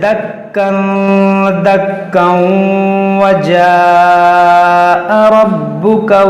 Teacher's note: یہاں پر دیکھیں تنوین کے بعد دال ہے، یہاں پر اخفا ہوگا، اور یہ کاف پر جب وقف کریں گے تو اس کو الف سے بدل دیں گے، دکا دکا، اور ملا کر پڑھیں گے یہاں پر۔ اگر یہاں وقف نہیں کریں گے تو یہ تنوین کے بعد واو پھر ادغام ہوگا